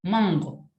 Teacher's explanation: cuando yo pronuncio mango, esa N se vuelve palatal. Es más, suena como un poco nasal. Mira, lo voy a exagerar. · Suena como más nasal porque es palatal hacia atrás.